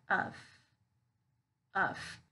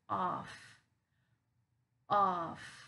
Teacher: we're going to use the schwa sound to pronounce that vowel sound